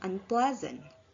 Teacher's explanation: on the first syllable plus a prefix on and become unpleasant the stress remains on the syllable pla which means the stress does not move and the affix on · The stress remains on the syllable ple, which means the stress does not move and the affix un does not affect the stress placement in the complex word.